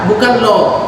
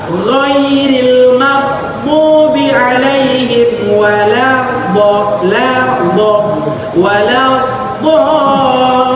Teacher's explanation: la-nya tipis, do-nya yang tebal